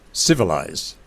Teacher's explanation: we find primary stress being given to the last syllable